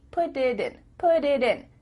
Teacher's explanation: Because instead of spending the time to let the air come out of your mouth, your tongue is just tapping the top of your mouth to make a D.